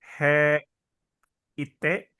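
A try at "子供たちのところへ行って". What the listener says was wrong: Nah, ini he, tapi karena dia bold, dibacanya jadi e. H-nya hilang.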